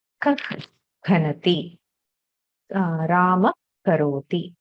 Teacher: Jihva muliya is the half visarga kind of sound which precedes ka or kha